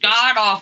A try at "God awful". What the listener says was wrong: God. No, you have to have the pause. God awful. God.